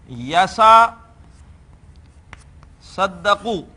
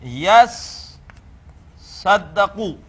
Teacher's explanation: ہم اس باب تفاعل کی تا کو اسی حرف میں بدل دیتے ہیں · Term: ادغام